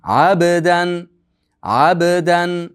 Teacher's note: Abdan iza solla, abdan ayn ingichka, undan keyin ba harfi bor. Qarang, ab bda sukunli bo'lganligi uchun qalqala bo'ladi. Qalqala bo'ladi.